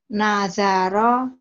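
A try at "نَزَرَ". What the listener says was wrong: Nazaro agak keras ya.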